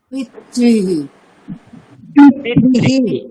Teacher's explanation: রিয়ের সাথে যদি বিসর্গ থাকে তাহলে আমরা এক্সট্রা হি উচ্চারণ করব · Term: বিসর্গের উচ্চারণ